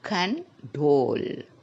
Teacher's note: there are two syllable in this word and the stress is in the last syllable